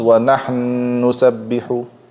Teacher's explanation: If I have the word wa nahnu nusabbihu, two noons are meeting. I merge them into one noon, it becomes wa nahnu nusabbihu. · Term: big merging